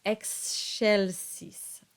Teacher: The C now takes on the sh quality, the soft sh sound, because it's between the X and an E.